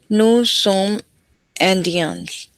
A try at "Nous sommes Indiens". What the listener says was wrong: लेकिन ज़ादिये पढ़ेंगे ठीक है अलग अलग नहीं पढ़ते nous sommes Zadiens. Nous sommes Zadiens. Nous sommes Zadiens. तो ऐसा क्यों हो रहा है बिकॉज जैदिया जैसे जसवी जैदिया आई एम इंडियन